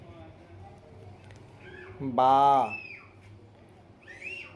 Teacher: دونوں ہونٹ کی تری مل کر با ادا ہوتا ہے۔